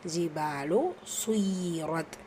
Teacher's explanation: பால அலிஃப் மத்தா 2 ஹரக்கத்தளவு நீட்டம் கொடுத்து ஓதணும்.